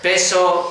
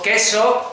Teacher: ha dicho peso, queso, ahí estás cambiando el lugar de articulación, pasas de bilabial a velar, pero los dos sonidos son oclusivos